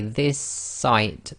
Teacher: this site so we say this site so the S effectively you're holding the s at the end of the word this and you're finishing off the sound of the s in the next word which is site so this is called germination it's effectively the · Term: gemination